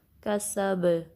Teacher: اور با پہ سٹاپ کریں گے تو کلکلا ہوگا۔